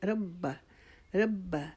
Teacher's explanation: را کو موٹا کریں گے، با کے اوپر شادہ کیے اس کو رکاوٹ کے ساتھ پڑھیں گے